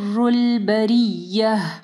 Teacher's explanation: را کو ہیوی پڑھنا ہے. بریہ میں گول تا میں جو ہے وقف کی صورت میں جو ہے یہ گول تا جو ہے ہا ہو جائے گی